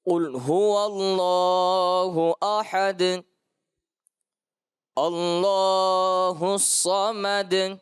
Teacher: دال میں دونوں مقامات پر قلقلہ خوب ظاہر کرنے کی کوشش کی۔